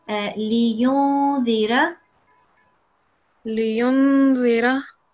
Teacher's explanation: we will make a nasal sound because it's got a noon with the sukoon